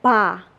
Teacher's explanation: the polite particle pa. The polite pa is just polite particle, but we voice, like we pronounce as ba, not pa.